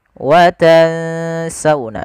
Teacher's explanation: Watansawna sembari kita menahan dengungannya sepanjang 2 harakat. Tidak cukup hanya watan sauna atau watan sauna, tapi dia juga harus ditahan. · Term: ikhfa